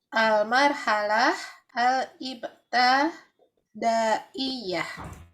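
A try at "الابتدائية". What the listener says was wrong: Ya, afwan Bu, mungkin itu ya harokatnya kesalahan untuk menaruh ibtidaiyah. Tanya berharokat kasrah.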